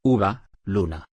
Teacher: Vocal cerrada posterior redondeada.